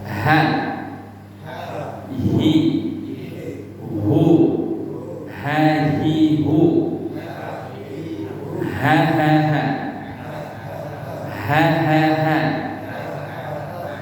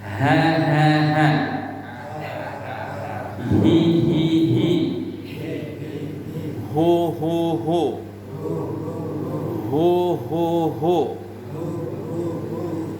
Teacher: Kalau H besar, makharijul hurufnya sama dengan hamzah tadi, dikeluarkan dari tenggorokan bawah. Bukan dari rongga mulut saja.